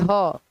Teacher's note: ह को हम लोग स्वर यंत्र से बोलते हैं। स्वर यंत्र है ना स्वर यंत्र से बोलते हैं।